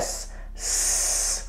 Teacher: There are no vibrations. Therefore, S is voiceless.